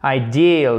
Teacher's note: faites bien l'accent tonique sur la seconde partie du mot. Ideal, c'est un i long, ok?